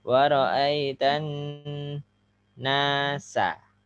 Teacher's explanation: Kalau biar nggak nyeret patah-patahkan aja, putus-putus. Waraitan itu dengung ya, lama.